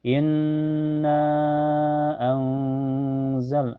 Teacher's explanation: Karena makhraj nun dengan zai berada di pertengahan. Cara bacanya nun sukunnya disamarkan ke zai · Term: ikhfa hakiki